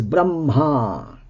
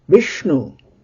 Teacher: because it immediately precedes a conjoint letter, ma, Brahma, bra in this case becomes guru, becomes a long vowel, a long letter